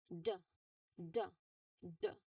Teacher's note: the tip of your tongue um it stops the air right behind your top teeth